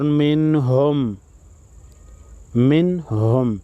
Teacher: نون ساکن پر غنہ نہیں ہوگا، اظہار ہوگا